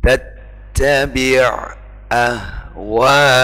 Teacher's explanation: Ainnya terbaca sendiri, hamzahnya terbaca sendiri.